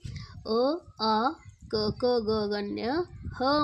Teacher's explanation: ಇವುಗಳನ್ನ ನಾವು ಕಂಠದಿಂದ ಉಚ್ಚಾರ ಮಾಡುತ್ತಿರುವುದರಿಂದ ಇವುಗಳಿಗೆ ಕಂಠವರ್ಣಗಳು ಅಂತ ನಾವು ಕರೀತೇವೆ